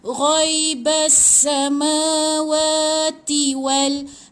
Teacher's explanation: Wa pun panjang 2 harakat sebab ada alif kecil